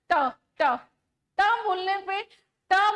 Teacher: बोलने पे आपकी जो जीवा है वो हल्का सा पीछे मुड़ रही है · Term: मूर्धन्य